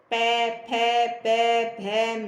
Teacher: देखो होठ हमारी कैसे इकट्ठे हो रहे हैं फिर प बोलो पूरा दोनों होठ आपस में मिलेंगे